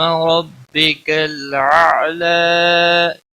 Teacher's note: ربک را کو زبر کی وجہ سے پور پڑیں گے، باقی کسی بھی حرکت والے حرف کو کھینچنا نہیں۔